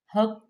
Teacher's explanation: قوف کو پر پڑھیں گے، قوف مشدد بھی ہے اور حروف مستعلیہ میں سے بھی ہے